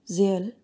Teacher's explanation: while you speak when you say the word zeal for example you should be able to sense the vibration of the vocal fold for the entire time that you take to pronounce the word because all three sounds are voiced so vibration of the vocal fold for producing the sound is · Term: voiced sound